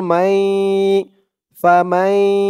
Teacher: মাই বলে আবার গুন্নাহ করতে হবে ঈদগামে বাগুন্নাহ